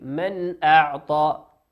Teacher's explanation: نون ساكنة أتى بعدها حرف الهمزة والهمزة من حروف الإظهار نظهرها كما هي